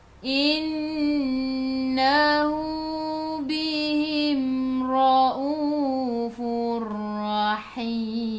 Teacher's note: Bihim, mim ada sukun, jelaskan mim izhar syafawi. Ra baca dengan tebal, ra baris atas, bacaan ra-nya tebal.